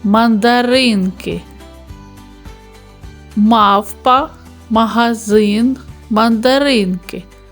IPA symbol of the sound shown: м